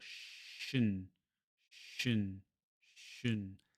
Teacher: And the trick for doing this is when you have this N with the line under it, you go from the previous sound directly to the N. You don't make any vowel sound. · And you may hear a little bit of a vowel as my tongue passes from that SH to that N sound. A little tiny vowel's made. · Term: syllabic-n